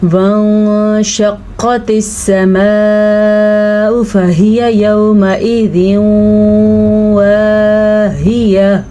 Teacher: سماء پہ یہ جو مد ہے یہ 5 حرکات عربیہ کے برابر ہے، یعنی اس کو آپ نے 5 سیکنڈ تک لمبا کرنا ہے۔